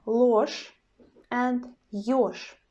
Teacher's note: our zh sound in the end changes to the sh, yes, in both situations.